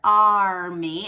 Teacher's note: a retroflex R and that is simply when the tongue tip is going up and back in the mouth now the back of your tongue still have to stay up